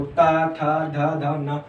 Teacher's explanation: ऐसा फील हो रहा होगा कि आपके जो दांत हैं वो जीभ से टच कर रहे हैं, दांत, ठीक है, दांत और इनका इनमें प्रयोग किया जा रहा है, इसलिए इनको बोलते हैं दंतीय व्यंजन, ठीक है।